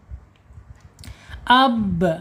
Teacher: ba ini mempunyai sifat qalqalah. Qalqalah mantul ya.